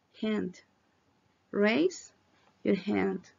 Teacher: es una EA muy rápida